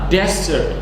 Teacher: desert itu stressnya ataupun penekanannya itu di awal